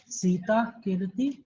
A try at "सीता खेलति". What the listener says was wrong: खेलति, खेलती नहीं, खेलती हिंदी में बोलते हैं। खेलति, यहाँ पे ला में आ की मात्रा आनी चाहिए, खेलति।